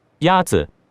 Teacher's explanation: The first tone is a high, level tone.